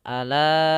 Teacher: Tadi kita belajar, yaitu namanya mad jaiz. Mad yang panjangnya 4 harokat karena bertemu dengan hamzah di lain kata, maka kita panjangkan.